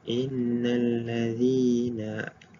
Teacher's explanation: Contohnya pada ayat innalladzina, zi 2 harakat sahaja, tidak lebih dan tidak kurang